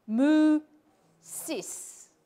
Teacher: mooses was said with an oo, which is a back vowel, and an e, which is a front vowel